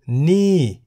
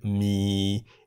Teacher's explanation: ni in the falling tone meaning this and mi in the low tone meaning noodles